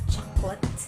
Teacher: the second vowel is becoming a schwa. It's a schwa vowel, meaning to say it's unstressed, so it becomes like chocolate.